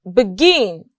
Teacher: lastly we have begin the stress is on gin